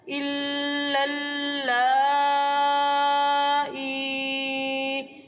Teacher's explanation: لا کو 2.5 الف کی مقدار کھینچنا ہے کیونکہ یہاں پر مد متصل ہے۔